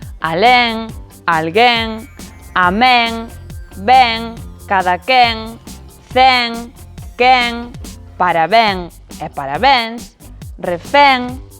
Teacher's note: Prácticamente todas as palabras agudas rematadas en en son con e aberto.